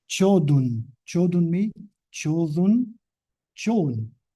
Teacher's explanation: a voiceless stop in intervocalic position becomes voiced, and then it becomes fricativized. And then what happens to fricatives, because they are very weak, they disappear.